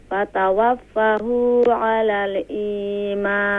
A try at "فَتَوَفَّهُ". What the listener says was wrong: فتوفه, because fa is double letter, double sound.